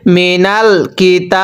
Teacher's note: এখন যদি আমরা এখানে ওয়াকফ করি তাহলে মিনাল কিতাব। ওয়াকফের সময় আবার তিন আলিফ টানতে হবে।